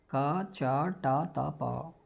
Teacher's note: अघोष अल्पप्राण, यानी स्पर्श हैं, दूसरा अघोष हैं, और तीसरा क्या है, अल्पप्राण है।